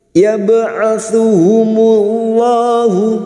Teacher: lam jalalah yang didahului dumah kita baca tafkim atau tebal. Yab'atsuhumullahu mim yang bertasdid gunnah musyaddadah kita dengungkan selama 3 harokat.